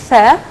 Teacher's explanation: notice that the lower lip touches the upper teeth